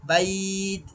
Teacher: বাইত ১ থেকে ৩ আলিফ পর্যন্ত টান হবে, আর শেষ হরফটা সাকিন হয়ে যাবে।